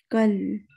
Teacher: لام پہ سکون سے آپ کی آواز رک گئی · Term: قلقلہ